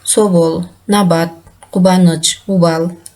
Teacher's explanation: Б тыбышы эки үндүүнүн ортосунда В тыбышына окшош айтылат